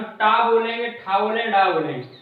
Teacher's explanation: तो जो हमारी जीभ है वो कहीं ना कहीं ऊपर वाले खुरदरे हिस्से पे आगे वाला हिस्सा हमारा टच हो रहा है मूर्धा पे, उसको मूर्धा बोलते हैं।